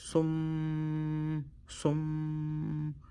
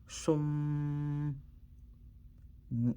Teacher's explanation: double the meme sound. Not only double it, but also we're gonna hold that meme first sound of the meme for 2 seconds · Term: ghunna